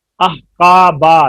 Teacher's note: با میں پہلا حرف جو ہے وہ باریک ہے با الف باریک. قا میں قاف پر ہے اور وہ اس کی وجہ سے الف پر ہو گیا